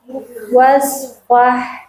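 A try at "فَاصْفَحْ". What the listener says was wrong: Bukan wa, fa.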